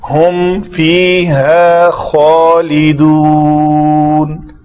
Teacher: خا کے لیے یہ رگڑ کی آواز آنی چاہیے